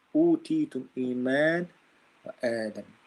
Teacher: the second hamza is changed to a mad letter that matches the vowel of the letter before it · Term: badal